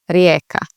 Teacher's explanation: this J is a little bit tricky because it sounds like a Y and not a J